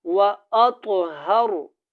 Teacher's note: طا موٹا ہے, یہاں پہ قلقلہ ہوگا